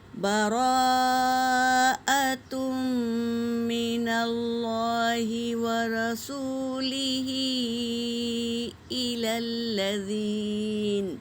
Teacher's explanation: براءۃ من اللہ ورسولہ الی الذین، با اور را حرکت ہے، جل پڑھیں گے، اور مد ہے را کے اوپر، مد متصل، حمزہ اسی کلمے میں ہے تو اسے 3 سے 4 الف کے مقدار کھینچیں گے · تنوین کے بعد میم پر تشدید ہے تو غنہ کریں گے